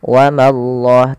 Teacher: Allah bila didahului dengan fathah maka Allahnya tebal